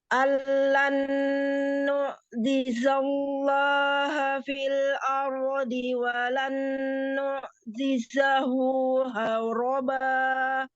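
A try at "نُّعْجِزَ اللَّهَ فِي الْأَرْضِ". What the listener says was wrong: Dilatih huruf ainnya. Huruf ainnya disukunkan ya, apa ini ya? Allan Allan nu'jizallaha fil ard.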